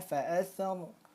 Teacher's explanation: Tafkhim tebal karena ada fathah bertemu dengan ro sukun. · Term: ro tafkhim